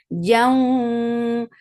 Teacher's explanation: idgham with gunna, so you're keeping the sound in your nose for a longer time.